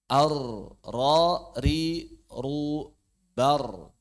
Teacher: huruf ro dikeluarkan dari ujung lidah sedikit ke arah punggungnya